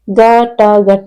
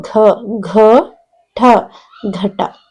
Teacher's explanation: ಮಹಾಪ್ರಾಣ ಅಕ್ಷರಗಳು ವರ್ಗೀಯ ವ್ಯಂಜನ ಳ ಎರಡನೇ ಸಾಲು ಮತ್ತು ನಾಲ್ಕನೇ ಸಾಲಿನ ಅಕ್ಷರಗಳಾಗಿವೆ ಇವುಗಳನ್ನ ಉಚ್ಚರಿಸುವಾಗ ಹೊಟ್ಟೆಯ ಭಾಗದಿಂದ ಹೆಚ್ಚಿನ ಗಾಳಿಯನ್ನ ಹೊರ ಹಾಕುವುದರ ಮೂಲಕ ಉಚ್ಚಾರ ಮಾಡುತ್ತಾರೆ